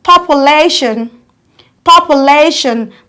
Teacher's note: The syllable receiving the loudest stress is lay.